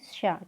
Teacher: छोटा वाला शा जो है हमारा अघोष वर्ण कहा जाता है